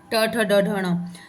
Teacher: ट ट ट है मूर्धन्य